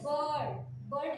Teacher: जहां पे आर का उच्चारण नहीं होता, आर साइलेंट होता है, वहां पे हम आ को क्या करते हैं, खींचते हैं, बर्ड, बर्ड ऐसा बोलते हैं, बर्ड, बर्ड, आ को खींचते हैं। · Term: आ का लंबा उच्चारण